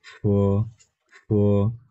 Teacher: এফ এর উচ্চারণ হ্যাঁ ফয়ের মতো, এবং এখানে হালকা একটু বাতাস বের হবে।